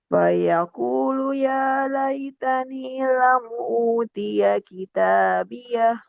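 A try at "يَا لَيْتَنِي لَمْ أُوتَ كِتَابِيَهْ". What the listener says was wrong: lam uta bukan utia kita ulang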